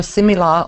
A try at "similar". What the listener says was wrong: Yeah, I want you to say that like, first of all, the beginning wants to be short, crisper, a little bit long, but the real problem is the la. There's no singing at the end.